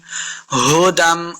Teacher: ہا کو حلق کے نیچے والے حصے سے ادا کرنا ہے